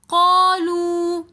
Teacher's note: دوبارہ پھر واو مدہ آ رہا ہے تو ہم قالو تھوڑا سا کھینچ کر پڑھیں گے